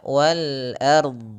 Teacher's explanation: Ah, ini sedikit tidak akurat; Seharusnya wal ard. Huruf a tipis, huruf r tebal, huruf d tebal